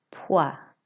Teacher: It's not poise. It's pois, an OI sound in French makes a wa sound. You don't pronounce the S, so it's pois.